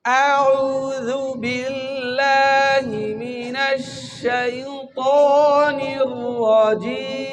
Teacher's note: أعوذ بالله من الشيطان الرجيم খেয়াল করে এক আঙ্গুল পরিমাণ ফাঁকা রাখবেন যখন আউযু বলবেন, আর আউযু যেন না হয়, হামজা যেন হলকের শুরু থেকে উচ্চারণ হয়